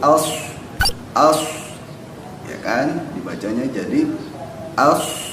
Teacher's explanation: suaranya itu antara ujung lidah sama ujung gigi seri yang di atas. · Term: huruf sod